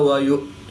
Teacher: حمزہ ساکن ہے، تو اس کو جھٹکا دے کر پڑھیں گے